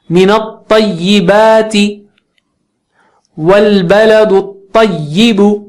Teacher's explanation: طا جو ہے اونچا موٹا اونچا پڑھیں گے